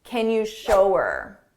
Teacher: Here her same thing. We can drop that H and it will sound like ER